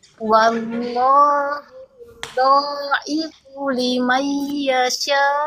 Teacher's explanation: Dhalnya 2 harokat aja, jangan panjang.